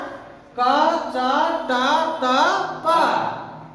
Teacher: पांच भागों को स्पर्श करती हुई निकलती है। कंठ से, तालु से, मूर्था से, दंत से और ओष्ठ से। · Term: स्पर्श व्यंजनों